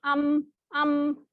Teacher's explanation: फिर उसके बाद मीम जो है वो कहाँ से अदा होता है, आप होंठ बंद करके खोलते हैं, जैसे अम, ठीक है, इस तरह से दोनों बाहर वाला जो आउटर पार्ट है वो मिलके फिर अलग होता है अम। इसकी एग्जाम्पल देख लेते हैं, ये देखते हैं, औ वसवासी वल अस्री वलम यूलद अब रब्बी युकज़्ज़िबु हब्लुन।